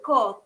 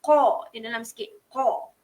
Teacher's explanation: huruf qa tu adalah huruf isti'la, huruf tebalkan, betulkan sebutan qa. Jangan sebut ka.